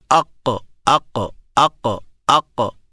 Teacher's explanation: قاف کی کیا صفت ہوئی کہ اس کے اوپر سانس رک جاتا ہے